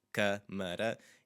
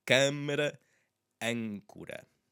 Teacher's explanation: Câmara, and that's telling us to close up that sound a little bit, and it happens to have an M, so it is a bit more of a nasally sound.